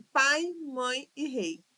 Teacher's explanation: Nestas três palavras, nós começamos com uma vogal e depois descemos para uma semivogal. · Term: encontro decrescente